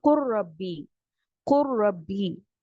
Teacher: رو میں اس طرح سے مرج کیا کہ لام کی کوئی صفت باقی نہ رہی، تو ہم نے اس کو پڑھا قر ربی.